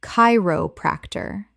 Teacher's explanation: The ch makes a k sound. Four syllables with stress on the first.